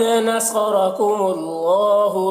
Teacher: صاد کو اور را کو پر پڑھنا ہے اور اللہ کو بھی پر پڑھنا ہے۔